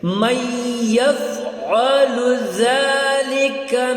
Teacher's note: من ہے، لیکن یہاں پر من کے بعد جو ہے یفعل، یا پہ تشدید آ گئی تو نون یہاں پر خاموش ہو جائے گی ، ٹھیک ہے، میم کو یا کے ساتھ ہم جوڑ کے